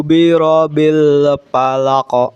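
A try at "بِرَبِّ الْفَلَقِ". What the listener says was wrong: Bi rabbil. Ba-nya bertasydid. Rabbil.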